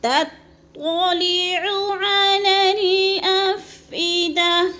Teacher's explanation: نار اللہ الموقدہ التی تطلع، التی، تی کو تھوڑا سا لمبا کر کے پڑھنا ہے، یا مدہ ہے 1 سے 2 الف کے برابر، اور تا باریک، اگلی تو موٹی، تطلع علی الافئدہ، علی، لام کو لام سے ملانا ہے، درمیان میں والا الف نہیں پڑھیں گے